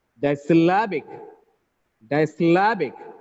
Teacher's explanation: lab is stressed, the penultimate syllable is stressed.